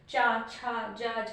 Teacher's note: इनमें जो हमारा जीभ है वो तालु को टच कर रही होती है